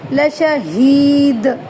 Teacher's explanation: ہاں کی آواز نکالنی ہے اور دال پہ قلقلہ کرنا ہے، لشہید، لام کو لمبا نہیں کرنا، اس کے اوپر زبر ہے، لشہید۔